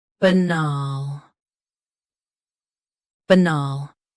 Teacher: Both US and UK have the same pronunciation of this word. Stress nal. Keep b soft and quick.